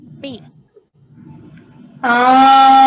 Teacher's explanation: The meme, the m sound is held for 2 counts before you let it go to produce the kasra sound. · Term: ghunna sound